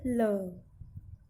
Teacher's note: इनको बोलते समय जिह्वा तालु को स्पर्श करती है, हवा एक या दोनों और बने जो पार्श्व हैं वहाँ से होकर निकलती है, जो खाली स्थान है दोनों मुंह के दोनों तरफ वहाँ से। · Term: पार्श्विक